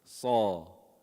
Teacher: So, sad has isti'la. So you raise the back of the tongue.